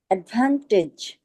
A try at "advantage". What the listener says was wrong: টেজ না টিজ টিজ অ্যাডভান্টেজ